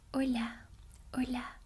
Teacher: Notice how in English you'll say the H, hello, but in Spanish you don't.